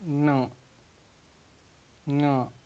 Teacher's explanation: after pronouncing from throat, at the end of pronunciation, nose is also used